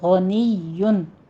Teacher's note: فإن اللہ میں بھی نون مشدد ہے، غنہ واجبہ کریں گے، پہلے 2 کاؤنٹ کرنا ہے اور آگے لفظ جلالہ کو پر پڑھنا ہے۔ غنیٌ میں غین کو آپ نے پر پڑھنا ہے اور یا کے اوپر تشدید بھی ہے، غنیٌ، ٹھیک ہے، غنیٌ نہیں کہنا، غنیٌ، آگے تنوین ہے اس کے اوپر، تو تنوین کا قاعدہ اظہار ہلکی کریں گے۔